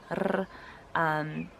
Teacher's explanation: some Afrikaans dialects and colored dialects will roll their R's, r, although there are even some dialects where the R is pronounced right at the back of the throat, and it's called a brei.